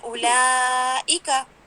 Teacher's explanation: حمزہ تسہیل کے ساتھ ادا نہیں ہوتا بلکہ اس کی آواز کو آپ پراپر مینشن کرتے ہیں، خوب واضح انداز میں نکالتے ہیں۔ جب بھی حمزہ آتا ہے نا، جیسے ہم پڑھتے ہیں اولائکا، ٹھیک ہے نا، اولائکا، تو ای میں نے اس کو خوب یعنی تحقیق کے ساتھ ادا کیا، میں نے اس کو اولائکا ایسے نہیں پڑھا۔